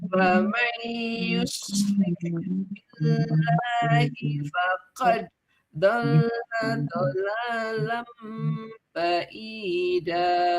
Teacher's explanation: dengungkan dulu 2 harokat, kemudian faqad itu mantul